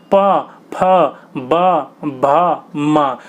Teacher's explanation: आपके जो होठ होंगे ना दोनों चिपकेंगे फिर खुलेंगे, चिपकेंगे खुलेंगे, इसलिए इनको ओष्ठ कहा जाता है।